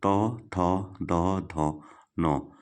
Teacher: जीभ दांतों के पास आ रही है, दंत्य है